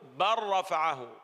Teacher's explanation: الحرف الثامن والأخير هو حرف اللام، فإنه يدغم في مثله ونزيد عليه الراء